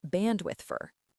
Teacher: If you say it slowly, you pronounce the D in bandwidth and the O in for bandwidth for. But in a real conversation, the D almost disappears and the word for turns into a tiny little sound like for. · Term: connected speech